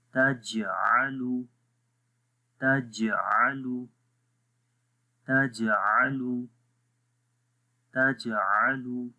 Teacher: تو یہاں پر جو قلقلہ ہے وہ ویک قلقلہ ہے